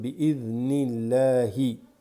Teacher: the alif drops here, goes straight into the lam بإذن الله. Okay, alif lam drops, you go to this lam here with the shadda بإذن الله.